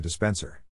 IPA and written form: dɪˈspɛn sər (DISPENSER)